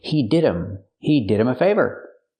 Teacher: We hear with him, the H is silent because it's not a stressed word.